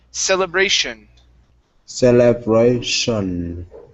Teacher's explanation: Now, the ending of that word has a T-I-O-N. Here, we want to pronounce an SH sound. So the T-I-O-N equals shun.